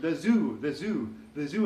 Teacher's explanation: the first letter or sound that doesn't exist in Spanish is Z, the Z sound